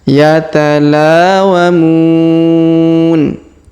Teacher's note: Yatalawamun. Huruf Mu kita panjangkan 2, 4, atau 6 harokat karena terdapat waw sukun di depan huruf Mu sebelum huruf pemberhentian, dan huruf pemberhentian huruf Na kita sukunkan atau kita matikan. · Huruf La kita panjangkan 2 harokat karena alif di depannya.